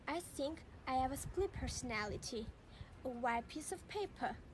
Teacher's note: the two sounds come together with the t changing to p